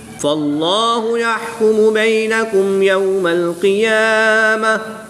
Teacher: گول تا کو وقف کی حالت میں ہا ساکن سے تبدیل کر کے پڑھیں گے